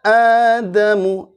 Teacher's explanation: Adamu jelas dari pangkal tenggorokan, jangan dari tengah tenggorokan lagi. Tengah tenggorokan ya, jangan dari tengah tenggorokan, tapi pangkal tenggorokan a ya. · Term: hamzah